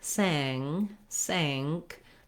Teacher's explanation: in the word sank, we don't have an N sound, but rather we have an NG sound. So you can notice if you say the word sang, sank, the back of your tongue lifts. · if you say the word sang, sank, the back of your tongue lifts. We're not lifting the front, sank, but rather the back.